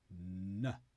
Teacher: To make the N sound, find the tip of your tongue, that's the very front of your tongue, then touch your teeth and then go a bit higher still. So your tongue, the tip of your tongue is touching above your teeth. Make a block so the air goes through your nose. Then release.